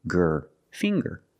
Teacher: We see the nasal sound, plus the hard G